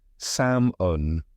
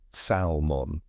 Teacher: the L was never pronounced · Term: silent L